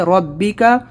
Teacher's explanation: فسبح بحمدی ربک، را کو موٹا پڑھیں گے